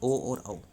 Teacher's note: तो कंठ और होठ के प्रयोग से करा जा रहा है आपका ओ और औ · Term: कंठ ओष्ठ्य